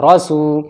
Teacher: سین واو پہ سو، واو ساکن سے پہلے سین کے اوپر پیش ہے، واو مد ہوگا یعنی واو کھینچے گا